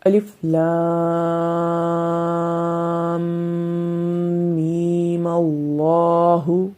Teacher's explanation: میم کے اوپر مد نہیں کریں گے جب وصل کریں گے · یہاں پر میم کو ہم نے لمبا نہیں کیا، جب ہم وقف کریں گے تو اس کو لمبا کریں گے.